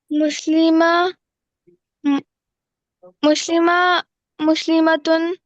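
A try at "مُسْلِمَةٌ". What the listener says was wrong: نہیں، دو پیش کے ساتھ پڑھو یا دو زبر زیر کے ساتھ، تاکہ پتہ چلے نا. یہ والا پہلے کر دو پیش. مسلماتن مسلماتن.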